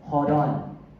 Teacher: Because you are combining the consonant and the vowel, so it sounds like hold on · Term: consonant plus vowel sound